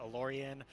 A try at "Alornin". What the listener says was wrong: Don't you have an extra N in there, Alorianin?